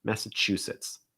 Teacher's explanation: you're going to stress the chew